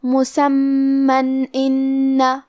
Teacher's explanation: کلمت ان الف حروف الاظہار میں سے ہے اور اظہار کا معنی ہے ظاہر کرنا اور تنوین کی اصلیت نون ساکن ہے تو ہم یہاں تنوین ظاہر کریں گے اور اسے نون ساکن پڑھیں گے اور بغیر غنہ سے یہ حکم کو ادا کریں گے